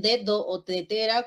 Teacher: para los sonidos dentales no parecera que la lengua está entre los dientes Pero no está entre los dientes la lengua está detrás del diente ustedes pronuncien dedo o tetera con Mirando al espejo para que